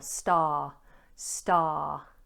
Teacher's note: this has a long vowel and we don't pronounce the R